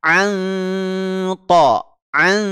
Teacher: ikhfa hqi ikhfa Hakiki bacaan yang disamarkan ya bacaan yang disamarkan Nun sukunnya disamarkan antara izhar dan gunah Ya sambil ditahan dua harakat karena dia mengandung gunah ya An An Ya ditahan dua harakat